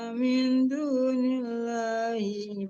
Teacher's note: lam allahnya ditipiskan ya Bu karena huruf sebelum lam Allah dia harakat kasrah atau baris di bawah ya lam allahnya ditipiskan.